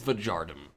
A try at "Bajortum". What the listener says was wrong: Spelled with an A and pronounced with an O.